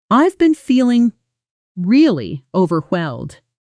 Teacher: Native speakers usually push extra weight onto really and overwhelmed together. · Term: natural stress pattern